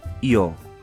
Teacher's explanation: E também há uma última pronúncia que é io, a pronúncia caribenha. O Y vira um I, io. Neste caso, na comparação do T e o Y, já que o espanhol não tem diferenças na pronúncia do T, lembram?